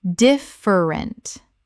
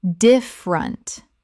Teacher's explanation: Native speakers reduce this to 2 syllables in normal conversation.